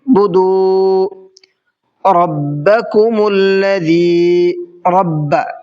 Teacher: را کو تھوڑا سا منہ بھر کے پڑھنا ہے